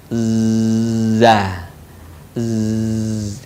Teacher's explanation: bagian bawah diucapkan dengan mengalir suara tanpa diiringi dengan mengalirnya udara sifat lain pada huruf Za ini karakter khasnya dia mirip dengan suara dengungan tawon